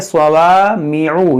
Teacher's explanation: स्वाद को मोटा करेंगे, यहाँ अलिफ मद्दा को खींच के पढ़ेंगे